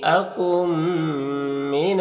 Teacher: نون ساکن کے بعد میم حروف یومن میں سے تو ادغام ناقص ہوگا، غنہ کے ساتھ پڑھیں گے